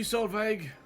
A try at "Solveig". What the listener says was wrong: The G is silent.